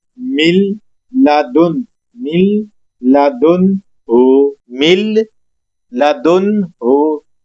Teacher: من نون کی آواز بالکل ختم کر دیں گے